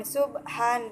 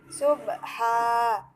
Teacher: Terdapat hukum bacaan mad iwad atau mad pengganti karena pada huruf H ada huruf alif yang jatuh sesudah huruf berharokat fathah tain yang terletak di akhir kalimat atau akhir ayat sehingga cara membacanya bukan subhan tetapi subha dipanjangkan selama 2 harokat